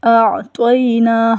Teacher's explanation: اعطینا حمزہ علیحدہ بولا جائے گا اور عین کی ادائیگی علیحدہ ہوگی